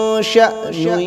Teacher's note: شأن ادھر جھٹکا مار کر پڑھنا ہے